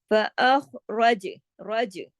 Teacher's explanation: جیم کو ہلا دینا ہے اس کے مخرج پہ کلکلے کے ساتھ